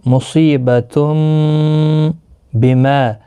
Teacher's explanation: تنوین کے بعد متحرک با آیا ہے، یہاں پر قلب ہوگا